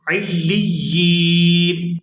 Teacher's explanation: وقف کی صورت میں نون جو ہے یہ بھی ساکن ہو جائے گا